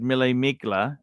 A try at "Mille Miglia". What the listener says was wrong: Did you just say Mille Migla? It's Mille Miglia. The G is silent in Italian. Mille Miglia.